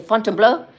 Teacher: I put a stress on the last part instead of saying fontlau.